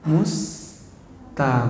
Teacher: agak ditekan kemudian tidak dilepas dulu ya, karena ada 2 ro yang digabung menjadi 1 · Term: ro yang bertasydid